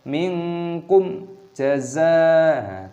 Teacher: sukun mim meeting a jim is read as izhar syafawi, read clearly, do not read with a hum. Minkum jaza'an, bukan minkum jaza'an, tidak, itu harus dibaca dengan jelas.